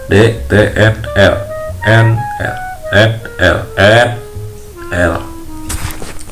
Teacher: Apikolontal itu adalah bunyi yang dihasilkan dari ujung lidah yang menempel dengan gigi atas